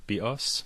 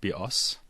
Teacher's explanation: So one of them says, and again you have to go to the Greek for this, the word bios means life in Greek, and the word bios, with the stress on the second syllable, means bow, as in bow and arrow.